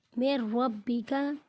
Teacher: نون ساکن کے بعد را حروف یرملون میں سے ہے تو یہاں پر ہم غنہ نہیں کریں گے